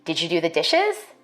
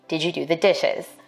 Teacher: white speakers we expect a rising tone in questions like these